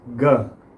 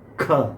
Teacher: अब ख भी आप देख लीजिए कि ये बिल्कुल पीछे से नहीं आ रहा है, जहाँ से ग निकला है वहीं से ख की साउंड निकल रही है, लेकिन थोड़ा सा ग में और ख में फ़र्क है। ग में इतना फोर्स नहीं पड़ता, ख में पड़ता है